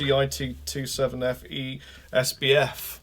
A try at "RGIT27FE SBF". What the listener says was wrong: I think you're getting it wrong now. That needs to be actually pronounced as a word. I spoke to someone at Ibanez and they said that's the right thing to do.